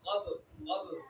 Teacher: با جب حروف قلقلہ ساکن ہو تو قلقلہ خوب ظاہر ہوتا ہے، لہذا قب قب کر کے پڑھنا ہے، کب نہیں پڑھنا، قب کر کے پڑھنا ہے، ٹھیک ہے.